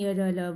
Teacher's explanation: इनका जो उच्चारण है जीभ, तालु, दांत और होठ के आपस में सटने से होता है, किंतु कहीं भी पूर्ण स्पर्श नहीं होता। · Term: अंतस्थ व्यंजन